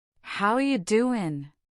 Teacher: voice goes up on how you doing to show a question and warmth